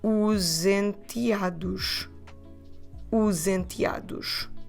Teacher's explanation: So we can run these two words together with the Z sound